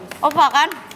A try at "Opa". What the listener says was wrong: Nadanya agak salah. Opa.